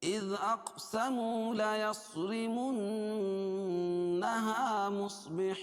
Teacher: اذ دال کو باریک پڑھیں گے، حمزہ کو دال میں ملائیں گے، اور پھر اور حمزہ کو قاف میں ملائیں گے. قاف پر قلقلہ کیونکہ اس پر جزم ہے